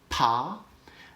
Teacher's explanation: i'm forcing air out of my mouth but i'm stopping it momentarily at the lips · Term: bilabial stops